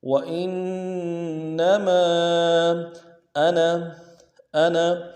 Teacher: ادا کرنا ہے، حمزہ کو نون ساکن کے ساتھ ملائیں گے، نون ساکن میں غنہ ہوگا، تشدید بھی ہے، زور دیں گے